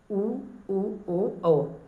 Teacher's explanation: ओष्ठ गोलाकार हो जाते हैं वृत्त मुखी में